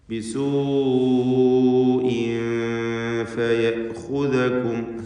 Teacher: തൻവീനും ശേഷം ഫാഉമാണ്. ഇഖ്ഫ ചെയ്തുകൊണ്ട് ഫാഇൻ്റെ മുമ്പിൽ തൻവീനിനെ മറച്ച് മണിച്ചുച്ചരിക്കുക.